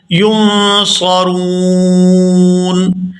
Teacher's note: وقف کی صورت میں نون جو ہے یہ ساکن ہو جائے گا